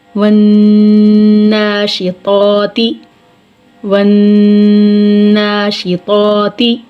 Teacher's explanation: لام تعریف کے بعد حروف شمسی میں سے نون آ رہا ہے، تو لام تعریف کا نون میں ادغام ہو جائے گا